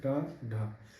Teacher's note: यानी जब हम ड और ढ का उच्चारण करते हैं ड, ढ तो हमारी जीवा बहुत तेजी से ऊपर जाती है और उतनी ही तेजी से नीचे भी आती है। इसलिए इन्हें उछित व्यंजन भी कहते हैं।